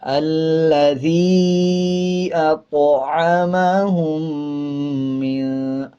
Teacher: آگے دیکھیں، طا کے اوپر جزم ہے، جب طا کے اوپر جزم آ جائے تو قلقلہ کرتے ہیں اور طا موٹے حروفوں میں سے آتا ہے